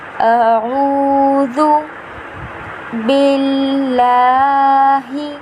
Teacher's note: لام جو ہے اسے ہم نے ایک الف کے برابر کھینچ کر پڑھنا ہے